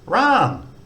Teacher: it's a low class initial consonant, and second tone mark, it's got a higher tone